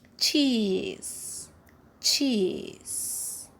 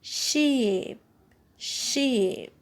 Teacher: raised towards a closed position so it's a closed vowel alright for this vowel the tongue is tense and the lips are spread or neutral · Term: long e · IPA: /i:/